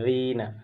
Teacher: یہاں یا سے پہلے زیر ہے تو یا مدہ، تو کھینچ کر کے اسے پڑھیں گے